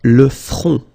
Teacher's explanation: Okay, remember this nasal on, on.